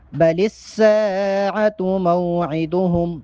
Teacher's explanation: سین الف مدہ ہے، سین کو ایک الف کے برابر لمبا کر کے پڑھیں گے